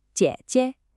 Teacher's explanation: That dipping third tone, then neutral.